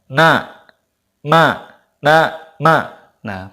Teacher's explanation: pasti hidung kita ada sedikit getaran Nah itu menunjukkan bahwa mim dan Nun itu ada gunanya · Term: ghunnah, gunah